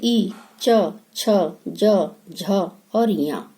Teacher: ठीक है, तो ये जब हम च बोलते हैं तो हमारी जीभ जो है ऊपर, मुंह के ऊपर हिस्से में तालू में टकराती है, हल्की सी छूती है, टच करती है। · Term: चवर्ग